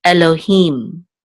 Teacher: This is a hey with a chirik, and the yud together will say e, so this will say he, and we'll close out the syllable with a mem sofit, so this will be him, Elohim. And the accent is on the last syllable